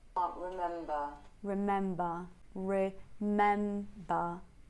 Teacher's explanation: Notice how remember gets a little emphasis because it's the last important thought of this line, and so mem is a bit higher and ba is a bit lower. That's what's perceived as a fall.